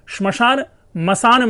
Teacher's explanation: श्मशान से मसान बन गया, तो श जो ध्वनि है वो विलुप्त हो गई। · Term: आदि व्यंजन का लोप